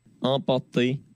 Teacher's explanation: c'est pas vraiment un E comme le mien, c'est-à-dire qui est assez fermé, mais c'est plutôt un E qui monte un tout petit peu.